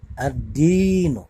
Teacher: alif lamnya melebur ke dalam huruf dal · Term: alif lam syamsiyah